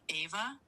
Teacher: You pronounce it like ava with the emphasis on the first syllable. >> So it's not eva, it's ava.